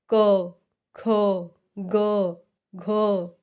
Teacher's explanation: ख ग घ ग तो आवाज कहां से आ रही है आवाज आ रही है हमारे गले से कंठ से निकल रही है आवाज तो इसलिए इसका उच्चारण स्थान क्या होगा कंठ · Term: क वर्ग